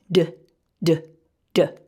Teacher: the letter d three times so we have d d and you should feel a little bit of a vibration in your throat as you say that sound